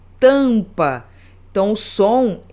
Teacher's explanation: fonemas vocálicos nasais que o som sai pelo nariz